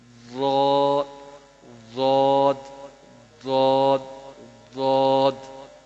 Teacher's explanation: کروٹ جب دائیں یا بائیں جانب اوپر والی 5 داڑوں سے ملے تو یہ حرف ادا ہوتا ہے. اوپر والی 5 داڑوں سے آخر والی جو ہے نا ساری داڑوں سے مل جائے، ضاد ضاد ضاد ضاد.